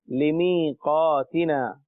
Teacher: اسی طرح لمیقاتنا، اس میں یا ساکن ہے، لمیقاتنا یا ساکن ہے کیونکہ یا کے اوپر علامت جزم موجود ہے. اور یا جب ساکن ہو اور اس سے پہلے زیر ہو تو وہاں یا مدہ ہوتا ہے، ایک الف یعنی 2 حرکات کے برابر کھینچ کر پڑھتے ہیں